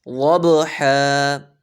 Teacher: والعادیات ضبحا، غوط کو موٹا کریں گے اور با پر قلقلہ کریں گے